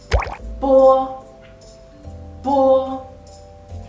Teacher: your lips block the airflow. And in a very short time, the airflow breaks through your lips. · bo is not aspirated. So when you pronounce bo, the airflow is very, very weak. You can take a piece of paper and let it close to your mouth. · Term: plosive initial